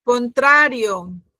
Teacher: 3 sílabas. Con En la segunda sílaba está la fuerza. trio. En la segunda, ¿no?